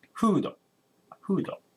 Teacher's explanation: because we don't have f sound, they say hudo